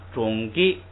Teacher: 要是单独读二声，不能读这个双音节词的一开始那个低的，要读成高的